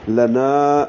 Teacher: نون کو 2 حرکات لمبا کریں گے، الف مدہ ہے یہ